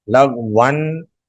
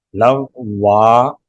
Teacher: دو زبر والا تنوین الف سے بدل جائے گا۔ لغون کو ہم وقف میں لغوا پڑھیں گے، یعنی ایک زبر اور ایک الف کے ساتھ پڑھیں گے، لغوا۔